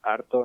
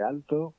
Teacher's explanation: cambiamos la L por la R, ¿no? En posición final de sílaba.